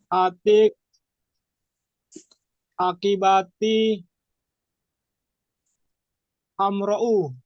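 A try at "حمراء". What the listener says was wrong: Nah, hamra panjang di. Hamra'u.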